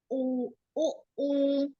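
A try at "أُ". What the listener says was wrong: U. Jangan dipanjangkan huruf pertama ya. U, U, U.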